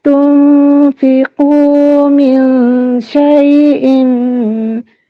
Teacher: ikhfa hakiki disebut seakan-akan ada mim samar-samar